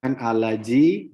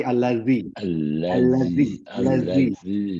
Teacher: Za berada di ujung lidah, sedikit keluar dari gigi depan. Za. Jangan jangan waktu kita membaca alazi, jangan alaji, tapi alazi yuwaswisu fi sudurin nas. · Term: zal